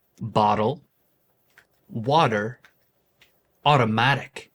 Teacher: a flap, which is a quick, soft sound similar to a D sound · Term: flap T